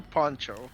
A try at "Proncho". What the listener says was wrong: Proncho. There's an R in there.